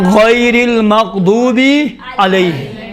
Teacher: غین موٹے حروف میں سے ہے، اس کو موٹا تلفظ کرنا ہے